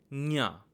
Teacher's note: nya is a palate-based letter, but it also uses the nasal passages to produce that sound. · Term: nasal element